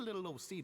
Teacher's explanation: See, when you have something like little old seat, we like to take away as many sounds when we're being lazy. So usually when we say ol, we mostly actually just make the O sound rather than the L sound